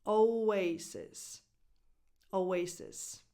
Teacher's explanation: And the 2 S consonants are both pronounced as voiceless S sounds.